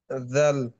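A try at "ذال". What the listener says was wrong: আচ্ছা, নামের ক্ষেত্রে বাকি আপনার উচ্চারণের ধরন ঠিক আছে। যেহেতু একটু লম্বা হয়, এটা আর একটু লম্বা রাখলে সুন্দর হয় আর কি।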